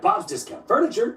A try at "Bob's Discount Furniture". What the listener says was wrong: It's Bob's Discount Furniture. You're putting the emphasis on the wrong syllable. It's Bob's Discount Furniture, as in get Bob's discount on furniture.